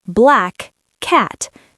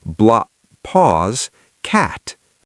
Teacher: You don't release the first K, you hold it. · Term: one long K sound